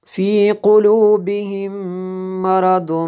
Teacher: یہاں پہ میم ساکن کے بعد دوسری میم ہے، یہاں پہ ادغام شفوی ہے اس لیے غنہ ہوا جی